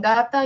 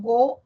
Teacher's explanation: En gata yo no redondeo labios, en go redondea mi labio.